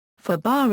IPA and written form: ˈfuːbɑr (foobar)